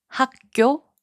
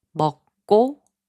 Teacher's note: The third rule is called tensification. Certain ending consonants will strengthen the starting consonant of the next character to its double consonant, 쌍기역, 쌍디귿, 쌍비읍, 쌍지읒.